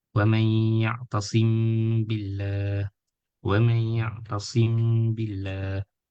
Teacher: So sim billah. So like the meme letter there is nasalization, there is guna to harkah, and then we continue. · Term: Ikhfa Shafawi